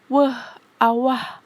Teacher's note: Fonem W tempat artikulasinya di bilabial, dua bibir. Cara artikulasinya aproksiman atau hampiran.